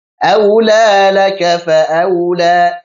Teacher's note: sifat lin kita alirkan, jangan sampai jangan sampai keluar dari hidung. Jadi jangan aula tapi au di sini.